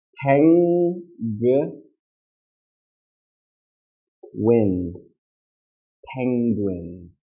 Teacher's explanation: When you say this, it's not penguin. You need to get ready for the g sound. So in the back of your mouth, it's n